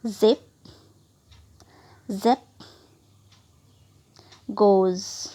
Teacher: यहाँ आप बहुत ज़्यादा वाइब्रेट फील करोगे अपने वोकल कॉर्ड को, इसलिए ये वॉइस्ड है